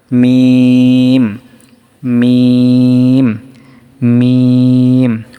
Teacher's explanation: এবং তখন বলছিলাম যে বাটা উচ্চারণ হয় আপনার ঠোটের ভিজা অংশ থেকে। আর মিমটা উচ্চারণ হয় ঠোটের শুকনা অংশ হতে মিম উচ্চারিত হয়